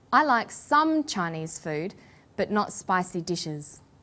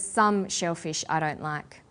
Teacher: we put the stress on the word some